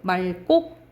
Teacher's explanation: 그래서 이거는 막다라고 발음이 돼야 돼. 그런데 이 리을 기역 뒤에 기역이 오면 리을로 발음돼요. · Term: 자음군 단순화